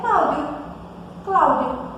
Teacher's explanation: Esse O, ele acaba adquirindo um som de U. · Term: semivogal